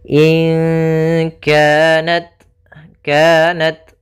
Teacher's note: Sehingga huruf t-nya harus ada sedikit hamesnya. Tapi jangan banyak-banyak. Jangan kanat kanat.